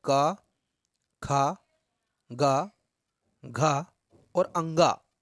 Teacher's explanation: इनका उच्चारण स्थान है कंठ